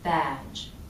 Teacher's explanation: also the vowel is longer on the word badge vowels are a little longer before voiced endings in these kinds